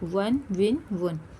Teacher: واو دونوں ہونٹوں کی گولائی سے ادا کرنا ہے